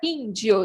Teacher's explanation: proparoxítona que é quando a antepenúltima sílaba é a mais forte